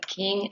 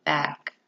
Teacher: the sound is a voiceless stop sound